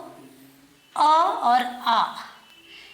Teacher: अ और आ ये जो होते हैं कंठय होते हैं, इनका उच्चारण कंठ से होता है, इसलिए हम इनको कंठय स्वर कहते हैं।